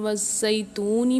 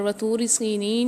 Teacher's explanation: जब ता के ऊपर पेश हो तो हमने इसको बारीक पढ़ना है, और जब तवा के ऊपर पेश हो तो हमने इसको पुर पढ़ना है हमेशा, यानी मोटा पढ़ना है उसको हमेशा।